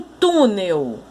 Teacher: Se a palavra tem acento, a sílaba tônica é a sílaba do acento. Então, em túnel, a sílaba tônica é o tu, porque é a sílaba que tem o acento